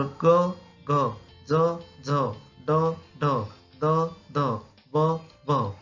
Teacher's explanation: तर क घ ज झ ड ढ द ध ब भ ही मृदू वर्ण आहेत। मृदू वर्णात नाद असतो, त्यामुळे हवेत कंपने निर्माण होतात